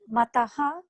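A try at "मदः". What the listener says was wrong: Not Mataha. Madaha. You have the problem of this ta and da, I think.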